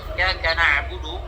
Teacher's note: jadi huruf ain itu ibu-ibu itu nggak boleh berhenti suaranya. Jadi nggak boleh nah, nggak boleh. · Jadi dia posisinya itu tidak tertahan suaranya, tidak juga mengalir suaranya. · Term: tawasud